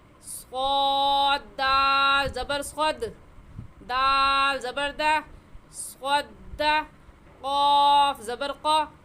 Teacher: یہ زبر زیر پیش جو ہوتے ہیں انہیں بغیر کھینچے اور بغیر جھٹکا دیے ہوئے پڑھتے ہیں۔ صاد کو کھینچیں گے، صاد کے اوپر جو زبر ہے اس کو نہیں کھینچیں گے